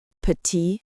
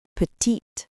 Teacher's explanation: This silent e is actually quite important because it signals that the consonant before it should be pronounced. Example petite male silent t versus petite female pronounced t. The final e makes the t audible.